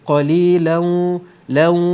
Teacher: tanwin berjumpa dengan waw idgham ma'al gunnah, didengungkan dengan dua harakat secara dengung, secara idgham naqis, idgham ma'al gunnah.